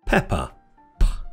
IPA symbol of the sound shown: p